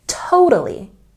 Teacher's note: And for this word, we put a stress on the first syllable. The middle T sound in this word is softer. It's a bit more like a D sound.